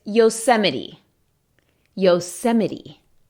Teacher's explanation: En la T no eches aire, solo es Yosemite.